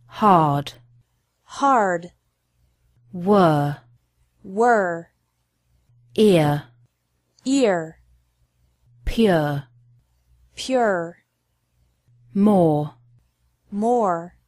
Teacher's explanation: letter R is also a little bit different the r is pronounced stronger in American English